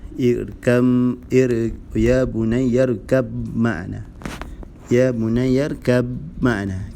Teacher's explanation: Ba mim, makhraj huruf dia iaitu bibir, tempat yang sama. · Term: idgham mutajanisain